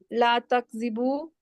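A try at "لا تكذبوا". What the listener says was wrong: चले, तो ये तकज़ेबू जब कहते हैं तो ये जो वाव के आगे अलिफ है ना, इसको थोड़ा सा लंबा किया करें, ठीक है।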